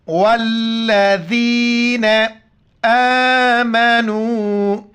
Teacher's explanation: واف کو لام کے ساتھ ملائیں گے، سختی کے ساتھ پڑھیں گے، جمع کے پڑھیں گے اور ذال کے وقت زبان باہر نکالنا ہے اور یا کے ساتھ ملائیں گے